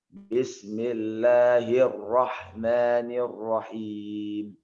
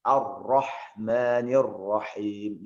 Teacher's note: Di sini ada kita kenal dengan huruf-huruf Quran itu yang tipis dan tebal ya. Adapun huruf tebal usahakan lebih ke arah O penyebutannya